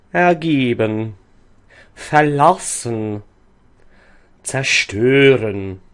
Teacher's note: In the prefixes er, ver, zer, and these are always unstressed. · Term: Schwa R